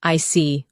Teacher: When you show understanding with I see, your tone drops slightly to show calmness. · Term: Intonation